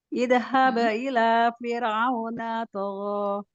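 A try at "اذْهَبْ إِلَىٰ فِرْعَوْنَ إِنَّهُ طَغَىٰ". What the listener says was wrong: Fir'auna innahunya hilang. Innahu tagha. Idhab ila fir'auna innahu tagha. Agak pelan-pelan dikit, sempurnakan tingkatan gunanya, sempurnakan sifatul hurufnya.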